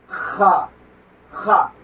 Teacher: खा जैसे आप खिखारते हैं उस तरह से अदा किया जाता है, जैसे खा खा, ये भी हलक से ही निकलता है, जहां से ये निकलेगा वहां से ये निकलेगा।